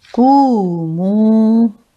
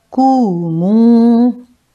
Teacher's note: dhamma is followed by a waw, it is stretched for 2 counts or by 2 harkat, and it is called waw madda.